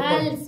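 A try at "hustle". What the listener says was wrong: अरे एस पहले पढ़, एस पहले बोलना है, हाँ हस हसली नहीं हसल हसल, टी ना साइलेंट है,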